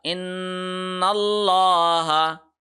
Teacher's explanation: لام کو ہم نے اللہ کے لام کو موٹا پڑھا